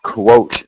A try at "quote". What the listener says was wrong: It's just that O sound, but you did it very well that time.